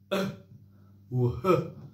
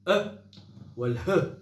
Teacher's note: أقصى الحلق فيه حرفان الهمزة والهاء